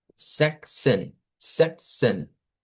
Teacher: esta Z en realidad va a sonar como una TS, como la unión de una TS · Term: africados